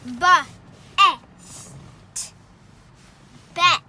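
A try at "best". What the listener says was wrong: Don't forget the S.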